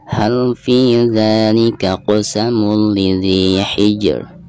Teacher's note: Caranya pertama kita baca huruf jimnya sekaligus qalqalahnya ya. Dan setelah qalqalah jim tersebut diikuti dengan suara ro-nya.